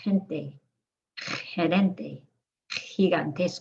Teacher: the g can also sound like a throaty h if it's followed by an i or an e